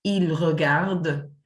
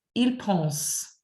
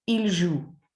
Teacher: The third person plural ending of the present tense also poses problems as it's never pronounced. So that NT is silent.